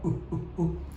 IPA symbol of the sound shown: ʊ